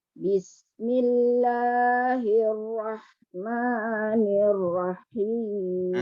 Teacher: Walaupun ha tu mati tapi ra tu tak boleh tarik ha tu. Hukum dia izhar kat situ.